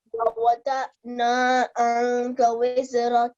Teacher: You have to conceal the sound of Nun and make a slight nasal sound. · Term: Ikhfa